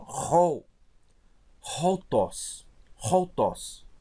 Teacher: Como tem uma aspiração forte, áspera, eu tenho que botar como se tivesse um H aqui na frente, ó, rol, roltos, roltos.